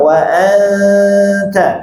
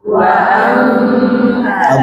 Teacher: wa anta, gunnah panjangkan lewat hidung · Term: gunnah ikhfa